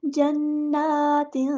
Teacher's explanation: جنات، آواز پر توجہ دیں، غور سے سنیں، اس طرح آپ کی اخفا کی آواز نکلنی چاہیے. جنات، اخفا کرتے ہوئے زبان آپ کی سٹل نیچے رہے گی، تالو کی طرف نہیں چپکانی. جنات تجری، اور جیم کو ہم نے یہاں پہ ہلانا ہے، کلکلا ہو رہا ہے.